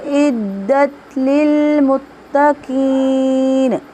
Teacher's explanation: عین وسط الحلق سے ادا ہو رہا ہے